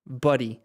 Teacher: Buddy es más corta y es como una mezcla entre la O y la A